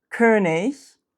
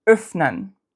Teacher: We've got the long, tense phoneme, like König, and the short, lax phoneme, like like öffnen.